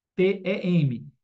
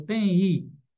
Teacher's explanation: Esse M não é dígrafo. Esse M se transforma em uma semivogal.